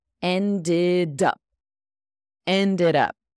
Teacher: That D-E-D sounds like an id.